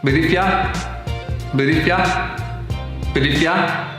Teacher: you get the weak form of if, and the weak form of you, and the t connects up to if